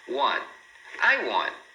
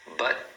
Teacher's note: ele coloca a língua lá onde faz o T, mas não deixa escapar o som, porque para eles isso é suficiente.